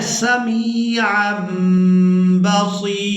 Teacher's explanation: تنوین میں جو نون کی آواز ہے اس کو ہم نے میم کے ساتھ بدل کر ادا کرنا ہے